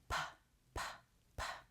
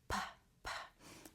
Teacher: not going to vibrate when you make that sound P PP it's just air coming out P which means that your voice is turned off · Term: voiceless